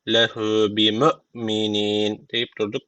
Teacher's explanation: En sona meddi arı tecviti var. Bir elif uzatarak duruyoruz.